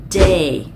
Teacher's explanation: chặn khí hoàn toàn, sau đó các bạn nhả khí ra, để lưỡi ở phía sau phần lưỡi cứng đằng sau răng cửa hàm trên